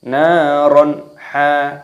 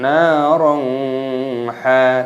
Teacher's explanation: Jadi cara membacanya yaitu dengan tidak boleh didengungkan, harus dibaca jelas. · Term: idhar halqi